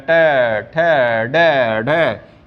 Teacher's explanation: मूर्धा से पुकारे जा रहे हैं, यानी कि जीभ को मोड़ करके आप बोल रहे हैं